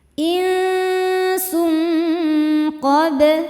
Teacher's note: Nah ini dengungnya besar karena qaf makhrajnya jauh dari nun. Jadi ini ikhfa yang bunyinya paling ang dan tebal karena qaf huruf tebal. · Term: ikhfa hakiki ab'ad